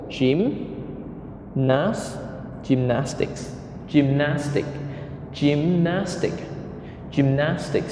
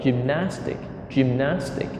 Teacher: so there are three syllables Jim Nantz gymnastics gymnastics gymnastics gymnastics so we stress on the second syllable